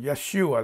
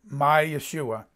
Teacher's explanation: emphasize the second syllable